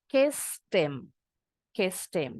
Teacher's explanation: Kalau dalam percakapan sehari-hari ini kebanyakan penutur asli ngebuang bunyi huruf H untuk pronoun him, her biasanya. Jadi karena H-nya dibuang, ini akhirannya T, jadi nyambungnya ke M.